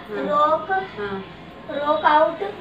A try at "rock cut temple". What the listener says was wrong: out नहीं है कट है सही कर लो CUT कट है वो पकड़ो हाँ बोलो क्या बोल रहे थे